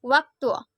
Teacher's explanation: Bunyi eng dengan ciri-ciri hidup, nasal, laminopalatal dengan contoh kata nyilu. Bunyi W dengan ciri-ciri mati, oral, bilabial